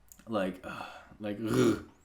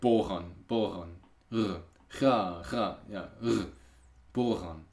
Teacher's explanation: And this is a voiced velar fricative